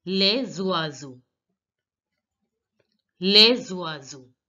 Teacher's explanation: because this word, les, ends with a consonant S and oiseau begins with a vowel O, we are going to link the words. S will become Z.